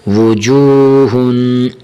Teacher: حرف ہا کو ہمیشہ موٹا کر کے پڑھیں گے، بریک نہیں پڑھیں گے۔